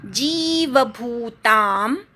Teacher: प्रकृत्यं विद्धि मे पराम, विद्धीमधल्या वीवर आघात, शेवटचा म अर्धा आहे. जीवभूताम, जी दीर्घ आहे, अनुस्वाराचा म, भू पण दीर्घ आहे